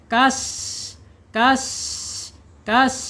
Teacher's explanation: Kemudian menurut sifat sifat ini ada di alhams. Alhams ya dia akan mengalir ketika sukun. · mengalir udaranya, mengalir napasnya karena dia karakternya sifat hams atau mempunyai sifat hams, mengalir.